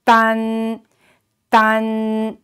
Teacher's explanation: the first tone is flat, keep it flat.